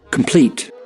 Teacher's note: Jadi bukan complete, bukan, tapi complete. Plate-nya itu yang ditekan, yang di-emphasize gitu.